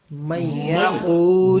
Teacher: نون کے فوراً بعد اگر ان کوئی ایسا لفظ آئے جو یمون سے شروع ہو تو وہاں نون کا وجود ناقص ادا کرنا ہے، پورا نہیں کرنا